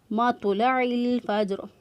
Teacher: کریں گے، مطلع الفجر۔ تو جو ہے اس پر قلقلہ ہوگا، قلقلہ کرتے ہوئے تو کو ادا کیا